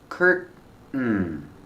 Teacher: You can say curtain, tin, curtain, or curtain, curtain, where you make the stop T and it falls to an N.